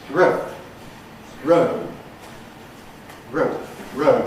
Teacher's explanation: the effect of a following fortis consonant is to reduce the duration of the vowel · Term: clipped